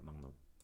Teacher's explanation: 기역 비읍이 뒤에 연결될 때 리을이 니은으로 변한다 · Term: 비음화